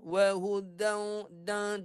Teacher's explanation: Dal jangan dengung. Dal keluar kat mulut dulu. Da keluar kat rongga mulut.